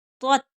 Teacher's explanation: پہلی تا جو ہے وہ پر پڑھی جائے گی اور دوسری تا باریک